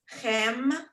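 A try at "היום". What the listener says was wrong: So that's actually a hey, not a chet. It's a hey. So that's an H sound.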